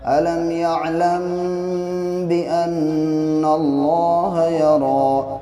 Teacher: میم ساکن کے بعد جب با آتا ہے تو پھر وہاں پہ اخفا ہوتا ہے، یعنی ناک میں تھوڑی دیر آواز کو روکتے ہیں